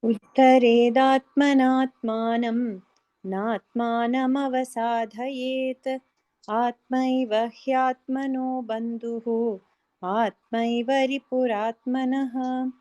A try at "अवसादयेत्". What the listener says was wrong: Avasadha la mahaprana illa. Avasadhayet.